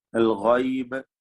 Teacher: അൽ ഗൈബ്, ഗൈന് തഫ്ഖീം ചെയ്ത് തടിപ്പിച്ച് ഉച്ചരിക്കേണ്ട അക്ഷരമാണ്. ബാഇന് ഖൽഖല കുബ്ര നൽകി വഖഫ് ചെയ്യണം